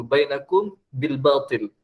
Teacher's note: Mim mati bertemu ba tu. Dengung apa harakat? Dua harakat lah. Semua dengung dua harakat. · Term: Ikhfa' syafawi